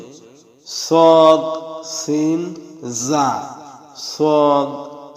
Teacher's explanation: দেখুন, 12 নম্বর মাখরাজ জিহ্বার আগা সামনের নিচের দুই দাঁতের আগার সঙ্গে লাগাইয়া 3টি হরফ উচ্চারিত হয়। এই 3টি হরফ হচ্ছে সদ, সিন, জা।